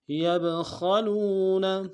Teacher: خا کو موٹا ادا کریں گے، لام کو واو کے ساتھ ملانا ہے، واو مدہ ایک انداز میں کھینچیں گے